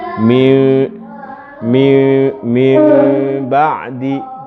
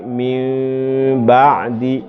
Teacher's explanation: Meskipun dia gunnah tapi tidak ada khaisyum dia. Gunnahnya 2 harokat tetapi tidak punya khaisyum. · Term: Iklab